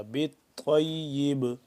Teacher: با کو ساکن کریں گے تو اس کے اوپر قلقلہ ہو جائے گا